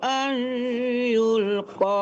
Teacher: itu dengung ya ke hidung ditarik ke hidung